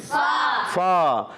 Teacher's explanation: فا ادا ہوتا ہے اوپر والے دانتوں کے جب کنارے نیچے والے ہونٹ کے تر حصے سے لگتے ہیں نا تو ادا ہوتا ہے فا